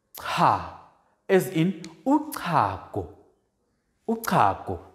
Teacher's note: We also have a voiceless click, dental click, which is aspirated.